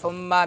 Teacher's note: ثم میم مشدد ہے تو غنہ ہوگا زمانی